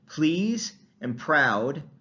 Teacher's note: you hear that little puff of air that's voiceless right so they're aspirated